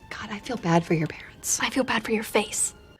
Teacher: the stressed words are feel bad and parents listen to how they stand out more than the other unstressed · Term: stress of the sentence